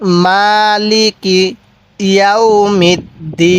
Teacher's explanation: যদি আমরা এখানে ওয়াকফ করি তাহলে নুনের নিচে যে জেরটি আছে এই জেরটিকে আমরা বাদ দিব